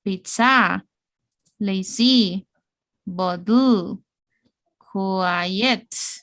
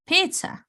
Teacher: Always we rise in the first syllable.